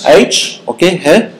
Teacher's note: It's glottal because it's produced in the glottis